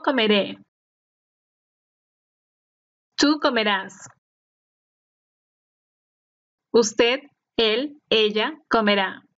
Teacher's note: the stress is on the last syllable, except for the conjugation for the first person plural form, which is stressed on the second to last syllable